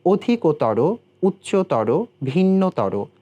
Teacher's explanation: তম এবং তর প্রত্যয় সংযুক্তে যে বিশেষণ শব্দগুলো ব্যবহার করছি আমরা, সেগুলো শেষে গিয়ে ওকারান্ত উচ্চারিত হচ্ছে